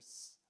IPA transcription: s